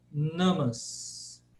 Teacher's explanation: esse na dental é o nosso exatamente o nosso na